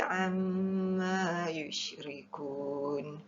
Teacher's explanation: Amma mim bertanda sabdu, hukumnya wajibal gunnah, wajib didengungkan.